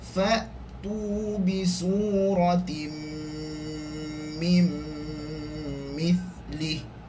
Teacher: Nun sakinah bertemu dengan mim, juga idgham ma'al ghunnah kamil. Maksudnya dua-dua kena dengung. Fa'tu bi suratim mim mithlih, yang mesti kena dengung, jangan cepat.